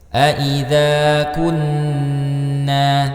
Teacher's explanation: terdapat nun yang bertasydid, maka dibaca gunnah dulu, ditahan ya. Gunnah musyaddadah, ya.